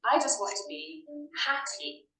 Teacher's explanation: The stress in the 2-syllable word, happy, is on the first syllable. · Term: word stress